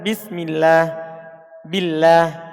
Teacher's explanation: lafadz Allah itu huruf lamnya dibaca tipis Jika dia terletak setelah kasrah · Dibaca tipis lamnya seperti dicontohkan bismillah, billah. Ini ada lafzul jalalah setelah kasro, maka dia dibaca tipis.